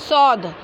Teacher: सौद, है ना, तीनों ज़बान की नोक और सामने के ऊपर नीचे वाले 4 दांतों के किनारे से अदा होगा। मगर सौद क्या होगा, पुर होगा, मुँह भरकर अदा होगा